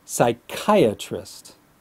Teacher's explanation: the vowel sound is E, like the long E, and not the I sound. Put S plus I plus K plus I plus atrist, psychiatrist.